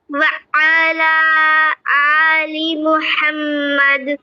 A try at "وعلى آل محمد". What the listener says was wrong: عین کی آواز کو اچھے سے پڑھیے. وعلى آل محمد.